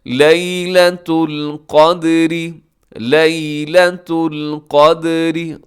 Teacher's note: دال اس میں قلقلہ ہوگا، قاف موٹا ہوگا